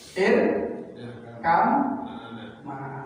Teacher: Ba bertemu dengan mim. Bukan qalqalah lagi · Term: idgham